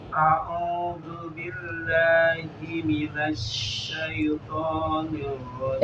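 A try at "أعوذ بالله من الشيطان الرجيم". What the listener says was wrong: Ya, tonya tebal ya. Syaitani. Yang menyebabkan tebal bukan lagi-lagi bukan mulut kita. Bukan gini, syaitani, bukan memonyongkan bibir atau membulatkan bibir, bukan. Syaitani, antum bisa lihat mulut Anda. Syaitani. Yang tebalnya itu karena pangkal lidahnya naik karena sifat isti'la. Isti'la yaitu sifat yang mengangkat pangkal lidah karena pangkal lidah menaik sehingga keluarlah huruf yang bunyi tebal.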